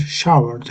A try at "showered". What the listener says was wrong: that's it. You've got it. Yeah, showered. That's it.